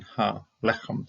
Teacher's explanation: Makef right here, and then ha lechem, the bread. Lovely milel accenting on a double segolate, which is quite normal to see.